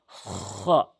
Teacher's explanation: হলকের শেষ থেকে হলকের শেষ থেকে খ এভাবে উচ্চারণ করবেন